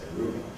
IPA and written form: ˈruːbɑːb (rhubarb)